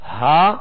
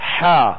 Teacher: ہا جو ہے وہ ابتدائی حلق سے، اور حا جو ہے درمیانے حلق سے ادا ہوتا ہے. اور ان میں فرق جو ہے یہی ہے جو آپ آواز کو محسوس کر رہے ہیں، ہا اور حا، ہا حا، یہ فرق ہے ان کے اندر، اور یہ فرق کرنا ضروری ہے، ورنہ ہا حا بن گیا، حا ہا بن گیا تو یہ درست طریقہ نہیں ہے.